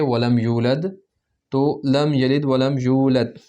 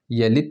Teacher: دال کو پڑھنے کے لیے باؤنس، قلقلہ کرنا ہوگا